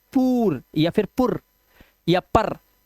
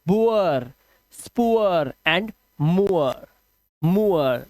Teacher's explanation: उआ की आवाज आ रही है क्योंकि आर लगा हुआ है